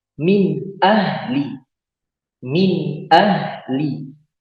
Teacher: Nun sukun ketemu dengan hamzah, dibaca jelas tanpa dengung. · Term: izhar halki